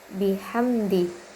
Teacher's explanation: Hukum tajwidnya izhar karena mim sukun bertemu dal. Cara bacanya itu jelas di bibir.